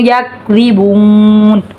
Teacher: زال نرمی والا حرف ہے، زبان دانتوں کے کناروں پہ لگے گی تو زال ادا ہوتا ہے، نرمی سے پڑھا جائے گا.